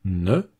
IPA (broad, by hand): n